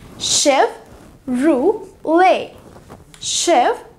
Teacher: इसमें T silent है